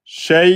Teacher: Et la hamza à l'arrêt, on bloque les cordes vocales. Shay. On met un petit nabre, une petite insistance.